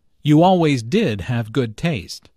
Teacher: Notice the stress on did, to emphasize the fact that Julia does have good taste.